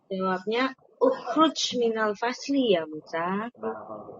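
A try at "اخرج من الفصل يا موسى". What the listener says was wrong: Ukhruj, tapi intonasinya Ibu bukan begitu. Intonasinya intonasi perintah. Ukhruj minal fasli ya Musa, begitu. Karena kata amr itu adalah kata kerja perintah.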